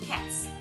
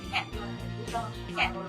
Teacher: The T sound is voiceless. It doesn't make your throat vibrate. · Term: voiceless S